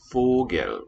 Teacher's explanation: We have a higher tone on the first syllable with a down step.